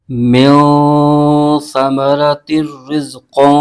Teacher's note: نون ساکن کے آگے حرف سا آ رہا ہے جو کہ حروف اخفا میں سے ہے، تو یہاں پر اخفا کا قاعدہ ہوگا، تو یہاں پر غنہ کریں گے، اور سا کو اس کے مخرج سے ادا کرنا ضروری ہے۔ سا کا مخرج یہ ہے کہ زبان کا سرا اوپر کے دانتوں کے اندرونی کنارے سے ادا ہوتا ہے، اگر اس کے مخرج سے ادا نہ کیا تو یہاں پر سین کی آواز نکلے گی جو کہ حرف بدلنے سے غلط ہو جائے گا، تو ہم نے یہ غلطی نہیں کرنی۔